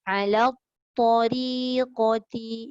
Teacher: Ri tu nipis betul-betul sebab ra baris kasrah.